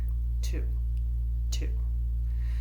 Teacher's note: Notice there's no explosion to the sound of my T. It's just light, crisp, and simple.